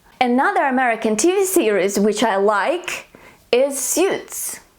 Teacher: So your voice stays excited through all the sentence. You don't lower your pitch.